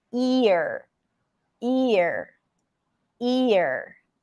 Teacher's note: this is a big shift from the e sound the tongue is moving forward to the R so the tongue is kind of like juggling there it does